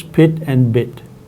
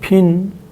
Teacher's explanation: the vowel in pit and bit is an oral e vowel, and the vowel in pin is a nasal e vowel